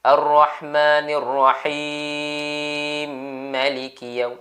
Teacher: tuan-tuan masukkan mim pertama, masuk pada mim yang kedua. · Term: idghamkan huruf mim